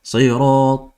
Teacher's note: Ta is a full mouth letter, whereas lam is not.